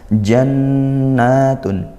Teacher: Jannatun nun bertasydid dibaca dengan ghunah ya.